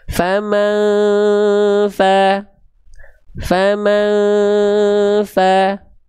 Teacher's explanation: Tapi bukan sedikit tapi bahkan mengalir. Fa itu dia mengalir deras nafasnya bukan cuman sedikit